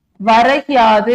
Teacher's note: முதல் சொல்லின் இறுதியில் இருக்கக்கூடிய கு என்னும் எழுத்து கீயாக ஒலிக்குது. அதுவும் முழுமையாக ஒரு மாத்திரை அளவுல ஒலிக்காம அரை மாத்திரை அளவுல குறைந்து ஒலிக்குது. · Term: குற்றிய லிகரம்